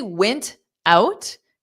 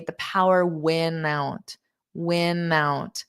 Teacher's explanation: you just really turn that into a flap t so you don't hear it